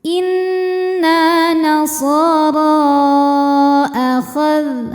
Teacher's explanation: Jadi sudah berada dalam 2 kata. Maka huruf ra kita panjangkan boleh 4 boleh 5 harokat. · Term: mad jaiz munfasil